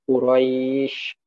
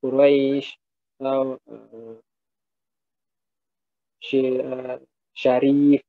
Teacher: Suara yang keluar saat mengucapkan huruf sin cukup besar. Udara juga keluar dengan kuat dari mulut. Nah, ini letaknya juga di tengah lidah dan langit-langit. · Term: huruf shin